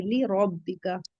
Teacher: کیونکہ را پر فتح ہے تو اسے ہیوی پڑھیں گے